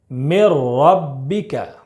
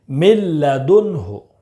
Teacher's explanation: ادغام تام بلا غنہ، یعنی بغیر غنہ کے پڑھیں گے